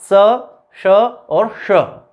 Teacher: ये 3 सकार हैं, दंत्य, तालव्य और मूर्धन्य।